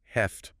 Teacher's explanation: Have to, when it means must or need to, almost invariably becomes heft, or sometimes maybe have to in spoken English.